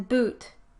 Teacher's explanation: Notice how the body of the tongue is pulled up and back towards the velum , so that the oral cavity is somewhat more open, and